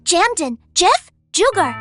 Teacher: Sound one, the Spanish J throaty friction.